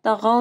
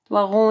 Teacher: طغوا، تغوا نہیں پڑھنا، طوا کو موٹا پڑھنا ہے اور غین کو بھی موٹا پڑھنا ہے